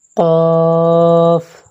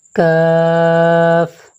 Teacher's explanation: قاف، اس کو تھوڑا موٹا کر کے پڑھیں گے، قاف، کاف، اور اس کو باریک کر کے پڑھیں گے، کاف